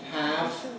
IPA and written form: hæv (have)